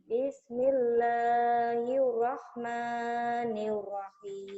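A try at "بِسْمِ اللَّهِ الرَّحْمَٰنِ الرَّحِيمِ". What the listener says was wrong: Kamu masih hirnya, R-nya hiu. Hiu, rahman, niu. Jangan niu. Nir. Hir, rahmanir.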